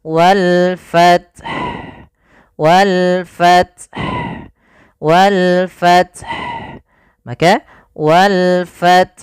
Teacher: Yang pertama matikan ta dengan sifat hamasnya, at baru ha